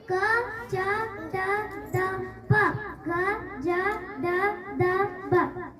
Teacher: ಕಡಿಮೆ ಉಸಿರಿಕೊಟ್ಟು ಉಚ್ಚರಿಸಲಾಗುವ ಅಕ್ಷರಗಳಿಗೆ ಅಲ್ಪಪ್ರಾಣಾಕ್ಷರಗಳೆನ್ನುವರು